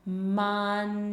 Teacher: Or I'll say, "Hey, let's do some words like 'bunch' and 'hunch' and 'munch,' and we might do it really, really slow." We start off slow, and we just hold up our tongue, and it kind of has to freeze in that N spot and get our lips round for us to then release the air like this: "munch," like that.